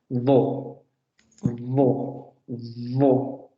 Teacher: Labio dental, el labio se pega al diente. Vo, fricativa, hay que generar esto, como dices, como soplado, sonoro, ¿no?